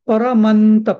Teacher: पुढे त असल्यामुळे न आला